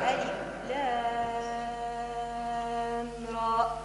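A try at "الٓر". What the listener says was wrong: راء حروف مد للهواء تنتهي، ما نقولش راء ونختمها بهمزة بقفل الصوت، لا، را بفتح الوتران صوتيان هكذا. را كما تقول مش ما تقفلش الهمزه.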